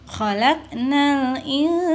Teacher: Dibacanya samar ya nunnya, sehingga dibacanya sana.